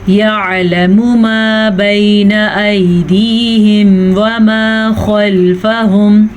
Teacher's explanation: آئین کو تھوڑا سا واضح کر لیں، بے شک آپ کا بہت ڈیپ مخرج نہ نکلے لیکن آئین کے مخرج کو ٹچ کرنا ضروری ہے.